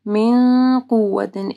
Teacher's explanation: پھر نون ساکن کے بعد قاف ہے، ٹھیک ہے، من قوت، اخفا غنہ ہوگا